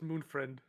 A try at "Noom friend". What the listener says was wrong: No, no, no, not Moon friend. Noom friend.